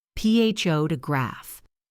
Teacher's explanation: The stress is on the first syllable, pho to graph.